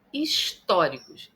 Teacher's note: Históricos tem a sílaba tônica na antipenúltima sílaba, então é uma palavra proparoxítona.